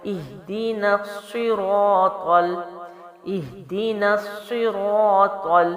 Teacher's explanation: طا کو بھی جو ہے موٹا پڑھ کے آگے لام سے ملائیں گے